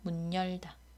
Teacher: 단어는 별개의 단어지만 실제로 발음을 해보면 문열다라고 한단 말이에요 문열다 그래서 문 다음에 여가 오니까 니은 첨가가 일어난 경우라고 하겠습니다 그리고 한국과 요리를 발음할 때 한국요리라고 하지 않고 한국요리 한국요리라고 하죠이